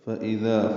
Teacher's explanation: اذا حمزہ سے حلق سے واضح ادا کرنا ہے